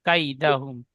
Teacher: কাইদা হুম কাই বলে টান দেব না, গুণনা করব না। কাইদা হুম, কাই কাপ, এখানে ইয়ালিন হবে, নরম আওয়াজে তাড়াতাড়ি পড়তে হবে।